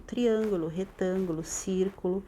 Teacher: todas elas estão acentuadas na antepenultima sílaba Ou seja é todos são proparoxítonas tá todas as proparoxítonas são